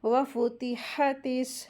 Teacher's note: ता को सीन में मिलाकर पढ़ेंगे और अलिफ लाम साइलेंट हो जाएगा, इसको नहीं पढ़ेंगे। · हा के लिए हम्स के साथ इसको अदा करते हैं।